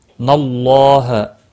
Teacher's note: اللہ کے لام کے پچھلے حرف کے اوپر زبر ہے، اس لیے اللہ کا لام موٹا پڑھا جائے گا، اس کے اوپر کھڑی زبر بھی ہے، ایک الف کے برابر کھینچ کر پڑھنا ہے۔